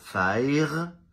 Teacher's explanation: un francophone spontanément va avoir tendance à prononcer fire en roulant le r